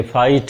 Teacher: वैसे तो आई आप ऐसे लिखो तो ये आई लेटर पढ़ा जाता है। ये डिफ्थोंग में आ साउंड भी है और ई। आ से ई की तरफ साउंड ग्लाइड करती है।